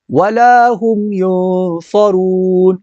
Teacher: یہاں ہم پر غنہ نہیں کریں گے کیونکہ یہاں اظہار ہے، میم ساکن کے بعد یا ہے۔